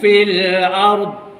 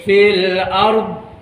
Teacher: lepas saja menyebut ar, tarik lidah ke tepi, kiri ataupun ke kanan. Maknanya ruangan yang banyak ni akan langgar kepada geraham. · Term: huruf dha